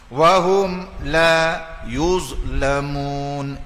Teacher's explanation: Izhar syafawi. Hum la izhar syafawi dipanggil. Itu tak boleh dengung.